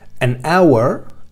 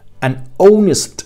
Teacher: Y otra, para aquellas en las que esa H es muda, es decir, que no pronunciamos la H. Fijaos que cuando yo pronuncio estos dos sintagmas, an hour, no estoy pronunciando la H.